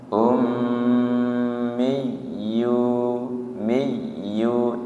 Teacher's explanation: ditasdid tanpa ditahan ya karena bukan idgham